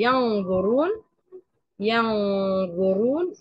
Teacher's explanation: بهيا الفم بقرب طرف اللسان من الثنايا العليا وبعمل غنه